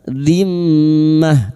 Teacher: mim yang bertasdid ghunah musyadadah kita dengungkan selama tiga harakat